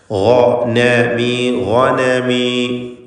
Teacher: ഗൈനിന് മാത്രം തഫ്ഖീം കൊടുക്കണം. ഇസ്തിഅലാൻ്റെ ഹർഫാണ്. മറ്റക്ഷരങ്ങൾക്ക് തഫ്ഖീം വരാതെ ശ്രദ്ധിക്കണം എന്നർത്ഥം. · ഗൈന് മഖ്റജിൽ നിന്ന് ഉച്ചരിക്കണം. ഹൽക്കിൻ്റെ ഹർഫാണ്. തൊണ്ടയുടെ മേലെ അറ്റമാണ്. നാവിനോട് ചേരുന്നതിൻ്റെ തൊട്ട് മുമ്പുള്ള ആ ഭാഗമാണ്.